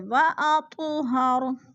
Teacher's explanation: خیر لکم اطہر، وَأَطُ پہ قلقلہ ہو رہا ہے، تو ساکن ہے اور حروف قلقلہ میں سے ہے تو تو کو ہم نے ہلا کر پڑھنا ہے